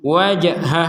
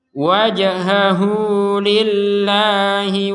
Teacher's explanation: sama sekali wajha enggak ada panjang jangan wajhahu enggak ada wajhahuu hanya akan panjang dua harakat kalau gabung sama lillah